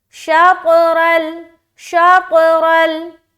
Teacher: اس کے بعد رل، را لام زبر رل، را کو موٹا لام میں ملائیں گے، ہماری آواز اسٹاپ ہو جائے گی لام میں ملتے ہوئے · طا میں قلقلہ ہو گیا